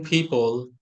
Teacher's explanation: পিপলের মধ্যে কিন্তু প্রথমটা কিন্তু ফ, পরেরটা কিন্তু প। ঠিক আছে, পরেরটা কিন্তু প সাউন্ড হবে।